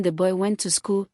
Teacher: the pitch of the voice goes down at the end of the sentence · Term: Falling intonation